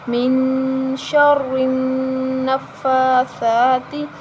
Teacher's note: نون پر اخفا کریں گے کیونکہ نون ساکن کے بعد حروف اخفا آ رہا ہے · یہاں نون مشدد ہے اس پر غنہ کریں گے · فا پر کھڑی زبر ہے اس کو ایک الف کے برابر لمبا کریں گے